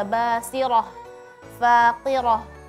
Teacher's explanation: Ha yang di akhir itu tipis. Jangan sampai terpengaruh dengan huruf ra yang tebal sebelumnya